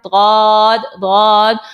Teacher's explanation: زبان کی کروٹ جب اوپر کے داڑوں کی جڑوں سے لگے تو ضاد نکل آتا ہے. زبان کی کروٹ ہے, اس کو آپ نے اوپر کے داڑھوں سے لگانا ہے, داڑھ دانت نہیں, داڑھوں سے لگانا ہے.